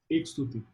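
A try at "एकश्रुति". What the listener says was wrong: Not Ekshruti. Speak Sanskrit, not Hindi. Ekashruti. Ekashruti.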